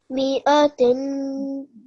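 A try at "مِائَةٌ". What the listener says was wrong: Yes, tun. Okay, the ta has a dhammatain on it. Okay, so tun, like that.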